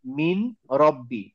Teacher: এখানে নুনটা পড়ে যাবে র এর সাথে মার্জ হবে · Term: ইদগাম